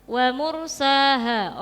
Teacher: Waursaha rnya dibaca tafhim karena didahului dumah. Ro sukun didahului dumah.